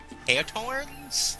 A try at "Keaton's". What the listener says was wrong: It's Keaton. No, it's it's pronounced Keaton's with a long E. Keaton's. No, it's Keaton's.